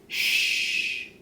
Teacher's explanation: for this shirt sound the voice box doesn't vibrate